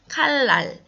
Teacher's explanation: 리을이 다른 자음, 특히 니은과 만나서 똑같은 리을로 르 소리로 바뀌면 이것을 유음화라고 이야기를 합니다. 같은 발음 방법, 같은 유음이 되는 거죠.